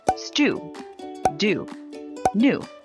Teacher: t d and n are made with the tongue in the same place inside the mouth which is in the gum ridge